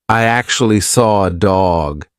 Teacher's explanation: I can't see an R, but I said an R. And that is because we have a feature called an intrusive R.